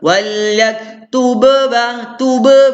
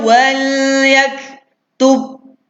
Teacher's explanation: Kena tahan jap, rapat bibir kejap dalam 1 second ke 2 second.